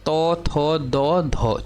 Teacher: तौ थौ निकलेगा दंत से